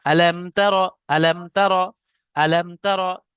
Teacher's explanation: মিম সাকিনকে বিনা গণনায় জাহির করে তাড়াতাড়ি পড়তে হবে, একে ইজাহারে সাফাবি বলা হয়।